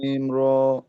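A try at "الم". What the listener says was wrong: লাম মিম এর মধ্যে গুণাটা আবার ছুটে গেছে, গুণাটা হয় নাই, আবার বলেন। হুম, মিম আর একটু লম্বা হবে, চার আলিফ।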